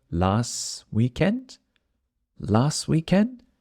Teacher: Again, the T at the end of last also disappears.